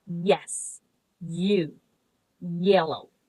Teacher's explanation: Next, the sound yah is palatal. So it is produced when the tongue is near the hard palate, like in yes, you, yellow.